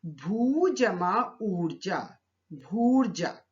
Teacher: भू शब्द का अंतिम वर्ण है दीर्घ ऊ और ऊर्जा शब्द का प्रथम वर्ण भी है दीर्घ ऊ, तो ऊ जमा ऊ मिलकर दीर्घ ऊ में परिवर्तित हो गया। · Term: दीर्घ संधि